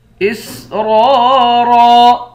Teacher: اسرارا یہاں پر بھی دونوں را کو موٹا پڑھیں گے۔